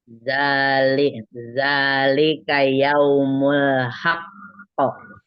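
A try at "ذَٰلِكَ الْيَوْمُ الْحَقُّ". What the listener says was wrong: Lamnya yang sayang, itu tawasud yang zalikal. Tempelin dulu lamnya. Zalikal. Kembali lagi zaknya panjang.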